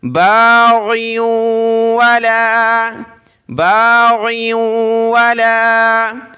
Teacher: کو آپ نے گاف نہیں پڑھنا، باغیوں نہیں، غین پڑھنی ہے، غین کو واو کے ساتھ ملا، ناک میں آواز پیدا ہوگی